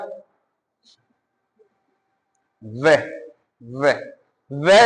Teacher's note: है और होठ है, वे, हमारा मुंह बंद हो रहा है, नीचे वाला होठ हमारे ऊपर वाले दांतों से टच हो जा रहा है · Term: दंत और ओष्ठ, दंतोष्ठ